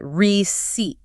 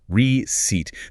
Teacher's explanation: The emphasis is heavy on the second syllable. The first part is a soft re.